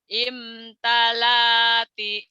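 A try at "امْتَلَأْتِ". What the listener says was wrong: kurang neken, kurang neken, kurang neken, kurang neken.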